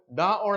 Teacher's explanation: सघोष हैं। सघोष का मतलब ये है कि इनको उच्चारण करते समय थोड़ा सा ज्यादा आवाज निकलती है।